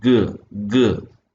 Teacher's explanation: back of your tongue is raised towards the soft parallel so the back of the tongue is the active articulator roof of the mouth [Music] is the passive articulator now there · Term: Velar sounds